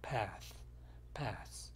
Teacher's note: path도 마찬가지로 빨리 할 때는 th 발음을 하지 않습니다.